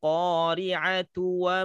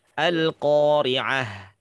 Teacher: kalau dia dibaca terus dia akan menjadi huruf ta tapi kalau dia berhenti berubah menjadi huruf H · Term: tak merebut